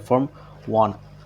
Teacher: the alveolar stop t is influenced by the surrounding nasal, causing the t sound to weaken and eventually disappear. This implication reduces articulatory effort and allows the phrase to be spoken more smoothly. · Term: assimilation